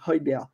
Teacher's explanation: En gros, ça se prononce avec un H aspiré, c'est Højbjerg. En gros, le G, on ne le prononce pas vraiment